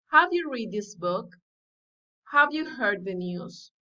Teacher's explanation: general questions rising intonation